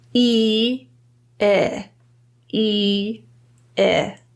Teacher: the middle of our tongue is almost in an identical position as E, but notice it's a bit lower. So to produce this sound, pull your tongue slightly down.